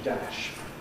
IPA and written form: dæʃ (dash)